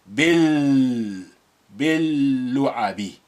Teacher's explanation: you're just linking the b with the first embedded lam, which has sukun on it